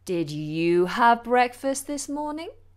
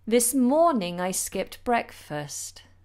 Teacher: when I'm asking a question my voice rises up but in every other sentence my voice starts high and then falls down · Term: intonation